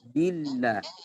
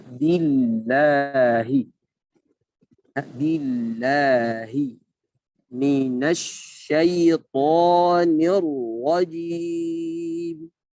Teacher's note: Karena lafaz jalalah di sini yang sebelumnya berharakat kasrah, maka lafaz jalalah ini itu kalimat Allah ya. Maka dibaca dengan tipis.